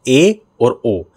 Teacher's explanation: जिन स्वरों के उच्चारण में मुख द्वार आधा बंद रहता है वो अर्धसंवृत। भाई संवृत में पूरा बंद, अर्धसंवृत में आधा बंद।